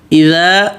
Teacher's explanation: اذا حمزہ بالکل واضح، اے نہیں